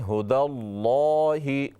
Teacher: लफ्ज़ अल्लाह कलाम मोटा करके पढ़ें।